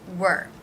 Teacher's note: Begins with the W consonant sound. It then has the schwa R sound combination